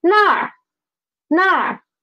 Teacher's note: So if I want to say where, then I should say nar, nar. I just need to put a retroflex final after na, then it becomes nar.